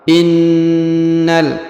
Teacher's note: Huruf na ditahan dan ditekan karena terdapat tanda tasdid.